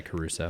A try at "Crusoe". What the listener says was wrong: There's no A in the last name. Get it right.